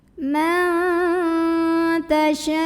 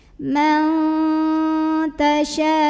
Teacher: Hamzahnya yang u pada kata tasya'u. Maka shinnya boleh dipanjangkan 4 atau 5 harokat. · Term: mad wajib mutasil